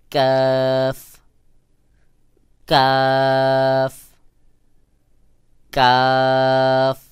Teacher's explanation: ক্ষেত্রে কফের বিকল্প হলো কফের কফের থেকে পুরা ভিন্ন আওয়াজ যেমন কাফ উচ্চারণের ক্ষেত্রে হালকা বাহিরের দিকে বাতাস বের হবে আর কাফ কে পাতলা করে উচ্চারণ করতে হবে স্বাভাবিকভাবে